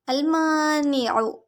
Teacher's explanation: میم کو ایک الف برابر لمبا کریں گے، الف مد، نون کی زیر کھینچیں گے نہیں، عین کو حلق کے درمیانی حصے سے پڑھیں گے، اور اس کی حرکت کو لمبا نہیں کریں گے۔